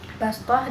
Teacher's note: bacaan gharib di mana penyebutan shad dibaca sin